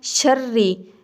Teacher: را کے نیچے زیر ہے تو قاعدہ کے مطابق را کو باریک کر کے پڑھنا ہے